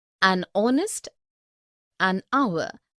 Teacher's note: the words heir, honest and hour begin with a vowel sound, as the initial consonant H is not pronounced